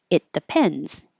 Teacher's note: you won't hear that t because it's right before the D your tongue's in the same place